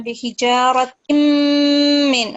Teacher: Min, this is a mim mushaddad, and you have to give it the nasal sound for 2 seconds